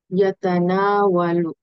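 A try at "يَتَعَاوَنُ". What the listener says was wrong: না, নুন নাই। ইয়াতা আ নু। আমার সাথে বলেন, তাআওয়ানা ইয়াতাআওয়ানু।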